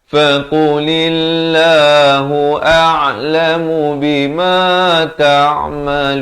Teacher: Lafz jalalah di sini dibaca nipis. Jangan baca faqulillah, itu jadi tebal ya.